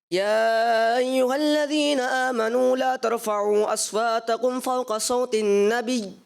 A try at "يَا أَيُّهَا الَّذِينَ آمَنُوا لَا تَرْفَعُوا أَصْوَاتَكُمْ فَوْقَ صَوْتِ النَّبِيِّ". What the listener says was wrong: ماشاءاللہ اچھا پڑھا, مگر یہ ہے کہ تھوڑی مد کمزور تھی, مگر آخر میں جو ہے فوق صوت النبی یا مشدد رکھنا نبی, تو آپ نے کیا مشدد کرنے کی کوشش کی اور تھوڑا کمزور تھا, پھر بھی آپ کو 10 میں سے 9 نمبر دیے جائیں گے.